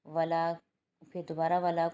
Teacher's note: ولا کو لام کو ایک الف کی مقدار کھینچیں گے، الف مدہ بن رہا ہے